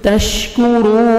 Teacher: تا کو باریک پڑھیں گے، شین کو اچھی طرح ادا کریں گے. تشکو کاف کو باریک پڑھیں گے.